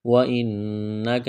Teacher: نون مشدد پر غنہ کریں گے، آواز ناک میں چھپائیں گے